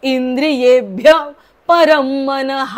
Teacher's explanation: शेवटचा विसर्ग पूर्ण बोलायचा